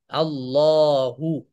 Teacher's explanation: আল্লাহু যখন আমরা বলবো তখন আল্লাহ শব্দের এই যে লামটা, লামকে আমরা 2 সেকেন্ড বা 2 হারাকা লম্বা করব